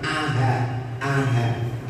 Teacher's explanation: Tasjil itu membaca hamzah, dibaca antara hamzah dan alif. Membaca hamzah, hamzahnya dibaca antara hamzah dan alif.